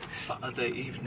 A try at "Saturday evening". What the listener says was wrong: It sounds like you said sucker evening. Does not sound like you're saying Saturday.